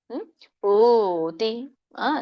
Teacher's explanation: ಪೂತಿ ದೀರ್ಘ ಇದೆ ಪೂ ದೊಡ್ಡ ಉ ಕೂಡಿದೆ